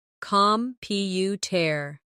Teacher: The stress is on the second syllable, computer. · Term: word stress